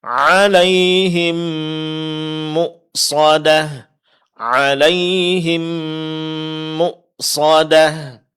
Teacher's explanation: dengung yang ada pada huruf mim ketika dia sukun bertemu dengan mim yang disebut dengan idgham mimi